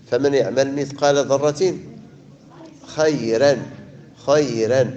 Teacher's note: نرققوا الراء لأن قبلها ياء ساكنة سكون حي